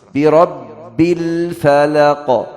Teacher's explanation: waktu baca birabbil harus baca ba yang kasrah tasydid, tasydid kasrah.